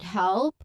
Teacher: This is a clean transition from the L sound to the P sound right at the beginning of the word.